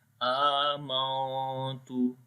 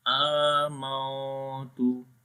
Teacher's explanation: We hide the sound of noon into our nose. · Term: ikhfa